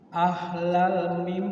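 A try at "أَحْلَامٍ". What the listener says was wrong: La-nya panjang. Ahlamim. La-nya panjang. Ahlamim.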